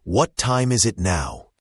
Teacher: The T in what might even be a flap T sound which is similar to a light D sound in American English like wad and is it now is it often sounds like is it because the s sound carries over to the it.